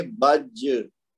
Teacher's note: تو قطب جد میں جیم بھی ہے نا، تو اب یہ لفظ ہے بج اور آخر میں جیم ہے اور یہ ساکن ہے، تو یہاں پہ ہوگا قلقلہ کبرا یعنی بڑا ہوگا. تو ہم جیم کو ذرا زور سے جھٹکا دے کے پڑھیں گے